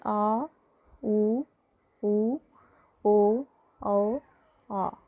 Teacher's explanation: जो हमारी जीभ का पिछला हिस्सा जिनके उच्चारण में मदद करता है वो क्या कहलाते हैं? पश्च स्वर कहलाते हैं।